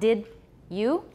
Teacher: in addition to palatalization it's also affrication